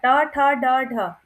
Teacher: इसका उच्चारण स्थान है मूर्धा, मीन्स के अंदर ही जीभ हमारी घूम रही है, ठीक है? तो इसका उच्चारण स्थान हो गया मूर्धा, ठीक है?